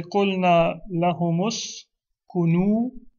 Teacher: The meme and the hum will become humu. And then the hamza will drop, and that meme will join to the sin. · Now, when you're reading it, قُلْنَا لَهُمْ has a sukun on the meme, and أُسْكُنُوا starts with a dhamma. But what will happen when you're reading it is that hum will become humu. We'll give a dhamma to the meme to make it easier to pronounce, and then we will drop the hamza.